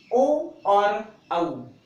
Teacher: इस औ का उच्चारण स्थान कंठ और ओष्ठ को मिलाने से कंठोष्ठ होता है। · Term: कंठोष्ठ उच्चारण स्थान